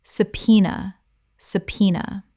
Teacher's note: 3 syllables with the B completely silent and the stress on the second.